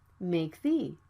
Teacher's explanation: And the plosive consonant K is right before the consonant TH. It can be unreleased as well.